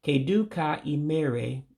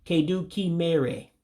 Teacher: They will take away the A in the ka and mix it with the E that's coming next.